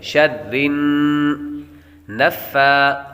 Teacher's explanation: نون مشدد پر ہمیشہ غنہ ہوتا ہے تو غنہ کریں گے۔ شر نفا، فا پر بھی کھڑا زبر ہے اور سا پر بھی کھڑا زبر ہے، کھڑی حرکات حروف مدہ کے قائم مقام ہوتی ہیں اس لیے حروف مدہ کی طرح ان کو بھی ایک الف یعنی دو حرکات کے برابر لمبا کر کے پڑھیں گے۔